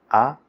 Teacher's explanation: La vocal A se produce con la boca completamente abierta, los labios distendidos y la lengua relajada en una posición cercana al centro de la boca